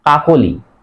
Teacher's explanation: এই মাঝের যে দেখো অ, কর সাথে অ আছে, এই অর উচ্চারণ ও এর মতো হবে